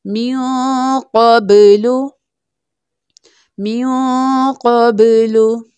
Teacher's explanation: अब यहाँ पर बा है, बा के ऊपर जज़म यानी सकून साइन है, बा कलकला लेटर है इसलिए यहाँ पर हम कलकला करेंगे यानी बाउंसिंग साउंड के साथ पढ़ेंगे। जब भी याद रखिएगा कलकला लेटर हो और कलकला लेटर के ऊपर जज़म यानी सकून साइन हो तो कलकला शुड बी मोर प्रोमिनेंट, तो हमें कलकला खूब जाहिर करना होगा।